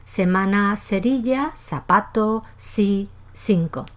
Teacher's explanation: todo con la misma pronunciación dental · No es el tipo de hablante habitual en América, ni tampoco en muchas zonas del sur de la península y sobre todo en Canarias, donde el hablante tiene seseo, es decir, pronuncia exactamente igual la C, la Z y la S.